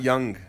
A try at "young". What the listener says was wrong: Young. Young. No, you really emphasize the G. I think about, like, Carl Jung when you say it like that. J-U-N-G.